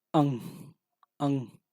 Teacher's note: अंग कहो निकल रही है, नाक और मुख से दोनों से निकल रहे, ये वर्ण जो है अनुनासिक हो जाएंगे।